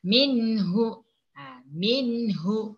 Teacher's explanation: Nun sukun, nun mati berjumpa dengan huruf H. Huruf H. Jadi huruf H adalah huruf izhar. Jadi bacaannya hendaklah jelas.